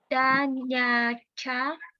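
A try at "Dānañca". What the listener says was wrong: Da nancha, not nyancha. Da nyancha. It should be da nancha.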